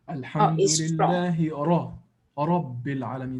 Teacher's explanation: the sound ra is strong or full mouth